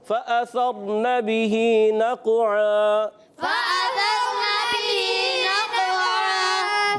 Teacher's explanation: دو زبر کی تنوین کو الف سے بدلیں گے، دو زبر کی تنوین کو الف سے بدلنا ہے